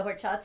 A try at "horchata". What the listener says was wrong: You don't pronounce the H. The H is silent in Spanish.